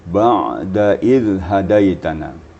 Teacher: Jadi ain itu harus ada isti'la'nya. Diangkat pangkal lidah, jadi ada bunyinya ya. Kalau ain sukun itu sifatnya bain-bain, arti tidak rakhawah, ni tidak pula syiddah, tidak bertalian dan tidak pula terputus suara kita.